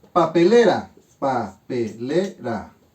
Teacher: Sílaba tónica en le, por lo tanto es una palabra grave.